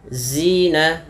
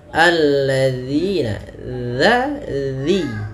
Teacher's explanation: ujung lidah kita dza tempelkan dengan dua gigi sari kita. Zina, alladzina, agar sempurna daripada makhraj huruf dzal.